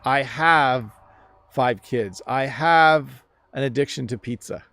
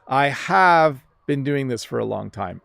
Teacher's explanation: notice when I say have, my lip is hitting my top teeth